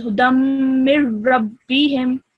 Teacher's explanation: this tanween or this double fatha is ignored and it becomes a single fatha, and you would join this to meme. So it was hudam, hudammi, okay?